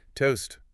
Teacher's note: Listen to the sharp T sound at both the beginning and the end of the word.